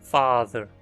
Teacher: Nessa vogal, a língua fica bem baixa na boca, longe do palato, e a mandíbula se abre. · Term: vogal [ɑ]